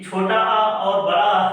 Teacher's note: छोटा आ और बड़ा आ है, इसका उच्चारण स्थान कंठ है।